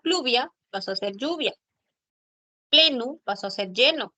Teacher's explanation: los grupos iniciales pl, cl, fl, evolucionaron al sonido de la doble l.